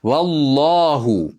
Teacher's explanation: valloh deb Alloh lafzi jallalasiga bog'lab o'qiymiz, yo'g'on bo'ladi.